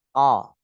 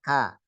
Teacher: qo belakang qim beda dengan k yang depan